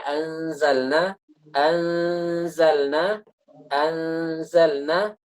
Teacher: posisi lidah sudah siap untuk mengucapkan huruf z hampir di makhraj Z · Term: ikhfa